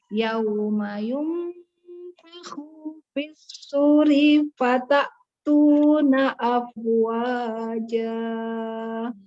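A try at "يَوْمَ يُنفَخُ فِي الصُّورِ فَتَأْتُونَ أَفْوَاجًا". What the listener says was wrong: Nah, yunfakhu khu-nya ndak panjang, suri yang panjang dua harokat. Tadi salah lagi. Coba fakhufis suri fakhufis suri fatatuna. Jadi 3 di situ fokusnya ya.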